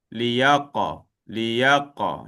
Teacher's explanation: Okey, sama juga dengan qaf. Qaf hurufnya tebal. So dia mesti diangkat pangkal lidahnya dan qalqalahnya pun tebal.